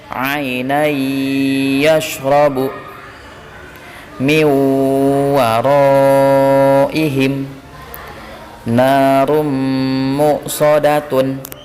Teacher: bunyi nun sukun dan tanwin dimasukkan ke dalam huruf berikutnya disertai dengung ketika bertemu dengan huruf ya, nun, mim, waw. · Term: idgham bil gunnah